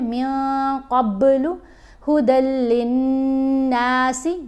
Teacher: غنہ کرتے ہوئے آواز ناک میں جاتی ہے اور ایک الف کی مقدار جتنا ٹھہر کر پڑھا جائے گا. جب لام کو نون سے ملایا جائے گا اس وقت غنہ ہوگا.